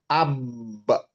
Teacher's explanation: Huruf ba itu di kedua bibir bertemunya kedua bibir ya. Ab dilepas. · Ab terhenti dan kemudian dilepas setelah qalqalah. Nah, karena qalqalah dia dilepas. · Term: makhraj ba